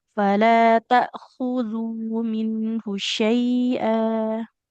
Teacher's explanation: Huruf kho-nya dia di tenggorokan ujung ya, Bu ya. Ujung tenggorokan. Bagian paling atas.